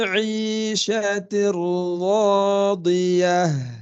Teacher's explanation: Fahuwa fi huruf ain ya. Ain ini makhrajnya di tengah tenggorokan ya